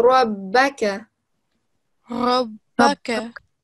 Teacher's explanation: It makes the letter, so doesn't necessarily make it thick. You just put more emphasis and put more pressure on that letter that's bearing the shadda